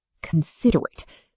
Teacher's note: considerate has stress on sid, not on the first syllable